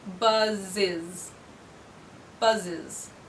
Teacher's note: buzz-buzz ends with one of our buzzing sounds so I'll add the syllable is on to it